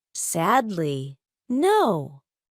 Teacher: The first syllable is stressed and the third syllable is stressed. Sadly, no. I have sad and no. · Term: stressed syllables